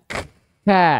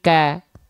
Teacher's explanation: suaranya enggak mengalir suaranya tertahan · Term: syiddah